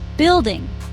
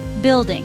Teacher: two syllable word stress is on first syllable.